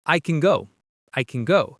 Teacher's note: in a sentence, can is usually fast and soft